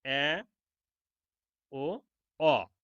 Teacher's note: এরপরে দেখো নিম্ন স্বরধ্বনি। এসব স্বরধ্বনি উচ্চারণের সময় জিহ্ব উচ্চ মধ্য স্বরধ্বনির তুলনায় নিচেই এবং নিম্ন স্বরধ্বনির থেকে উপরে ওঠে।